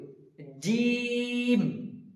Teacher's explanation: জি জিম বলার সময় খেয়াল রাখব জিমটা হবে ভারী গলায় এবং জিমে তিন আলিফ টান দিতে হবে জি এটা যেন চিকন বা যেন না বের হয় জিম যেন